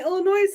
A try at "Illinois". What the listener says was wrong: Illinois. No S. Illinois. No. You have to say it without the S.